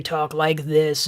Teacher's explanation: if you just hold your breath and then loosen up a little bit and then you talk like this and then you have that really raspy sound